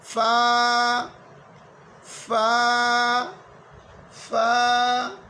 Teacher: فا کا مخرج ہے نیچے ہونٹ کا پیٹ اور اوپر سامنے 2 دانتوں کا کنارہ